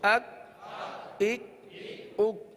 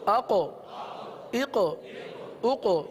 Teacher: دیکھیے ایک طرف پہلے کاف پڑھا، پھر دوسری طرف قاف، یہ دو حروف ہم نے پڑھے۔ کاف کو ہم نے باریک بھی پڑھا، قلقلہ نہیں کیا، قاف کو پر بھی پڑھا اور اس میں قلقلہ بھی ادا ہوا ہے